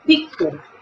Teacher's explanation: Poniendo el labio superior, los dientes superiores sobre el labio inferior